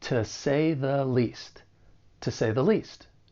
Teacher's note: The first one is to. So, when it's unstressed, it's going to sound weaker and it'll sound like tu with that schwa sound · the article is commonly pronounced with that schwa, the. So altogether, it's going to sound like to say the least.